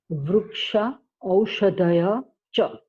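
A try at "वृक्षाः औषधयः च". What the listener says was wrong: You don't drop the visarga. Shaha Aushadayaha. Not Aushadaya. It is Aushadaya. There's a mistake also there. One extra vertical stroke. Aushadayaha. Not O. You're saying O. It is O. Aushadayaha.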